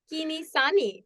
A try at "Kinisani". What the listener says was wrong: It's actually a click sound right at the start, so it's Kinisani.